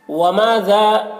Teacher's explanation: ما میں الف مدہ ہے، ایک الف کے برابر کھینچ کر پڑھیں گے اسے